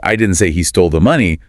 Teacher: the rising intonation on stole implies maybe he borrowed it or found it